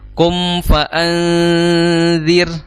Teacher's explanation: kedua bibir bawah dan bibir atas itu dipertemukan terlebih dahulu untuk menghasilkan mim yang sempurna ya, disertai dengan gunnah. Kum fa'anzir ya, jangan terburu-buru untuk mengucapkan huruf setelahnya sebelum mimnya itu sempurna dalam melafadzkan, dalam mengucapkan.